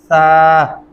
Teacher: सा नरमी से अदा होता है, दोनों दांतों के नीचे जबान की नोक आएगी